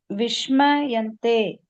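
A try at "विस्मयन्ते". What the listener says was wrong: சகாராவை வந்து ஷகாரா மாதிரி ப்ரொனவுன்ஸ் பண்ணாதீங்க. சகாரா. சகாரா, தட் இஸ் சரஸ்வதி சா. அந்த சா வந்து ஷா வரக்கூடாது. ச ச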